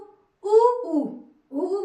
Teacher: उ उ उ बोल रहे है तो हमारा जो ओठ का हिस्सा है वो गोला हो जा रहा है · अ, आ बोलकर देखिए, अ, आ में कंठ, ये वाला भाग सक्रिय है, ई तालु, उ बोल रहे हैं, तो हमारा जो ओठ का हिस्सा है वो गोला हो जा रहा है, उ यानी कि इसमें उ हम होठों से बोलते हैं।